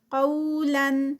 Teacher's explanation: فَبَدَّلَ الَّذِينَ، زی یہاں پر 2 کاؤنٹس یا مدہ، ظلموا، زو ہیوی، مو جو ہے یہ 2 کاؤنٹس واو مدہ، قولا غیر الذی، قولا، قو پہ واو لین اور قاف ہیوی